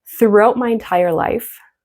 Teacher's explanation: English speakers often will not pronounce the T in this circumstance because it's followed by M.